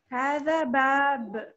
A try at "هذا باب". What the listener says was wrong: هذا باب. یہ باب جب بہت زیادہ زور لگاتے ہیں آپ تو یہ شد بن جاتی ہے. شد بھی نہیں بنانا.